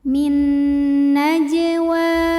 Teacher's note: kecil Min naajwa Wa ada hukum tajwid namanya Mad Thobi'i muqaddar karena ada baris fathah tegak di atas huruf wau maka cara bacanya huruf wau ini panjang dua harakat